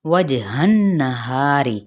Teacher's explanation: जिम पे कलकला होगा, नून पे गुन्ना होगा